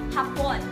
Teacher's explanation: Binibigkas ng mabilis na may diin sa ikalawang pantig.